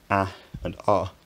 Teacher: ah counts as a low vowel because it's pronounced with the tongue low in the mouth